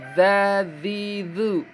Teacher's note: Dza dzi atau digigit ya ujung lidah digigit dua seri. Seri bawah dan atas